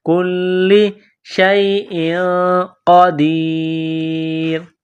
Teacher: کاف کو باریک کرنا ہے، لام میں سختی کرنی ہے